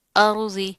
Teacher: را کے اوپر کیا ہے، جزم آ رہی ہے، اس سے پہلے کیا ہے، زبر ہے، تو زبر آ رہی ہے تو ہم اس کو موٹا پڑھیں گے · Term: را موٹا